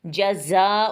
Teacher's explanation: فما جزاء من، فما میم کو تھوڑا سا لمبا کریں گے کیونکہ الف مدہ ہے، جزاء زا میں سیٹی کی آواز اچھے سے آئے گی، اور زا کو ہم اچھے سے لمبا کریں گے کیونکہ یہاں بھی مد بن رہی ہے، الف مدہ کے بعد حمزہ آ گیا ہے تو مد متصل بن رہی ہے، یعنی ایک ہی کلمے میں ہے مد۔